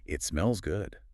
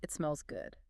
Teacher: When we say this in English, we generally want to emphasize the word good to convey true satisfaction. We stretch that vowel sound out just a little bit to show that we are actively enjoying the moment. It smells good.